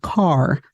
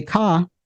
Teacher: There is the absence of R or Rlessness. In many contexts, speakers of AVE don't pronounce that final R at the end of words.